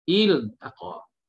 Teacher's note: Il, lam itu baca secara izhar, jelas. Sebab apa? Sebab tidak ada huruf lam dan ra selepas ni.